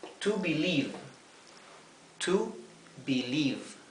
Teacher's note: Fíjense que en el verbo to believe, cuando tenemos esta combinación de letras o de vocales, como dijimos antes, la I con la E se pronuncia como una I larga.